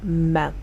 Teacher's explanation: the sound also starts immediately because m is voiced. But the waveform is different because the sound is produced through the nose, giving it a unique shape and a slightly longer delay compared to the sound b.